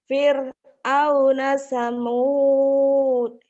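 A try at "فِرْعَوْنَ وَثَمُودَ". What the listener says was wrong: Wawunya nangis ketinggalan kok Wawu nggak diajak. Kenapa Fir'aun dan Samud wawunya nggak diajak. Nih wawunya.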